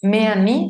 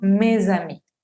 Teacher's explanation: Al momento de unir va a sonar como z, z. Esta vendría siendo la liaison.